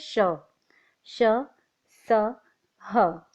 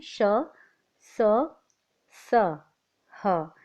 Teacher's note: आगे देखते हैं ऊष्म व्यंजन। इन वर्णों को बोलते समय मुंह से हवा गर्म रगड़ के घर्षण के साथ निकलती है